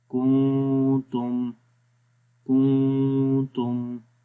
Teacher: تو میم کی آواز کو ہونٹوں کے خشک حصوں سے پڑھیں گے اور میم کی آواز ناک کے اندر بھی گونجے گی